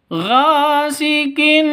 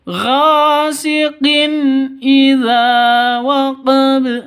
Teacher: Ghasiqin, tanwin bertemu dengan hamzah. Idza hamzah, jelas, terang, tidak boleh dengung, tidak boleh panjang.